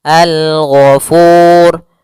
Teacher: hukum ra tafkhim. Ra yang dia dibaca dengan tebal.